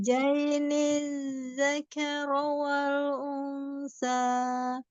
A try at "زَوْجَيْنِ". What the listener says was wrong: Langsung tasdid ya. Jainil Jainil, jangan dinaikin nil, jangan jainil